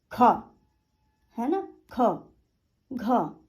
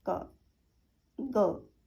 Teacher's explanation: उच्चारण करने में ह ह सुनाई दे रहा है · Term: महाप्राण